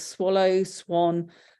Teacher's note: that w for some reason or rather affects the sound of that ah so it makes an o sound